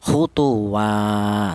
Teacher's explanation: cara bacanya itu dipanjangkan 1 alif atau 2 harokat atau 2 ketukan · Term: mad tabi'i